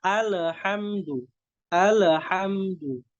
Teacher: Kesalahan yang sering itu kita memantulkan qalqalah. Kita memantulkan huruf lam. Jadi alhamdu.